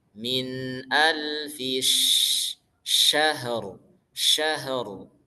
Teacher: Sya huruf shin makhrajnya dari lidah tengah. Jadi dia bertumpu pada lidah tengah.